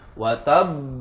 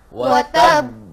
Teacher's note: Cara membunyikannya adalah dengan memantul tapi ditahan sebentar tapi suara masih ee terdengar. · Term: huruf pantulan